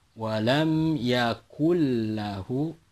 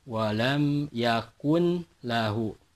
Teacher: yakul lahu jadi tidak boleh dibaca walam yakun lahu yakun lahu nun sukun nya tidak perlu dibaca lagi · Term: idgham bilagunnah